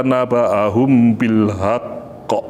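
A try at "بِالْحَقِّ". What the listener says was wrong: Ya, catatannya di huruf H kecil ya. Huruf H, haqq. Catatannya huruf H kecil.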